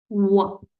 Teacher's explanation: दांतों को अपने होठों के अंदर वाली जगह से लगाना है, ऐसे ऐसे वाइब्रेशन जैसी आवाज आनी चाहिए। व, गोल मुंह करके, व व व ज ज ज ज ज- ठीक है।